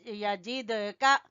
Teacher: دال کے اوپر ہلکا سا کلکلا کریں گے